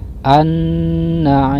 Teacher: Ketika dibaca huruf lamnya diidghamkan atau dimasukkan ke dalam huruf nun, jadi tidak tampak dalam pengucapannya. Kemudian guna sebab huruf nun di tasdid. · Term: alif lam syamsiyah